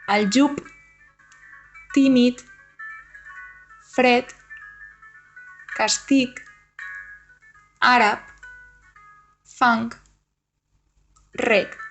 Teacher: a final de paraula, les sonores tendeixen a neutralitzar-se de manera que sonen totes sordes